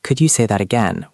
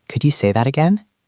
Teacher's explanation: It sounds like you are the boss. You need to go up at the end. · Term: rising voice